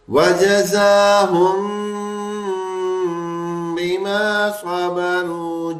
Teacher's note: میم ساکن کے بعد با، میم ساکن کے بعد با، یہ غنہ کرے گا.